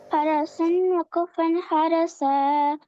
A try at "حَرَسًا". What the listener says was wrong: را موٹا کر.